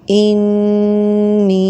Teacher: noon has shadda one alif length, and ya has also mudda letter, so 1 alif length. So we gave 2 alifs length, one is to noon and one is to ya. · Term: gunna